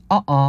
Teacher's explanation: 목에 긴장이 느껴지게 되고요 혹은 영어로도 어 그거 아니야라고 할 때 어어 할 때도 어 하는 그 소리가 성문 파열음에 해당한다고 할 수 있겠죠